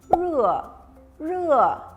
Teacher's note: ini seperti er tapi lidahnya juga ditekuk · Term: lidahnya harus ditekuk